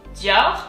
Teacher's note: French has very kind of guttural R's. They come from deep down, so they come from your throat. So you kind of have to think like you're upset, like, you know, like in the comic books that you may read, it goes when the protagonist is upset, and it's kind of the same.